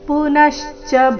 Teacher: ಪುನಶ್ಚ ನ ಮೇಲೆ ಆಘಾತ ಈ ಶಬ್ದದಲ್ಲಿ ಮೂರು ಅಕ್ಷರ ರಸ್ವ ಇದೆ ಅದಕ್ಕಾಗಿ ಅದರ ಮೇಲೆ ಜಾಸ್ತಿ ಹೊತ್ತು